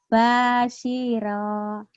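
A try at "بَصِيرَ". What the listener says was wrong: Roknya pendek lagi. Baswiro.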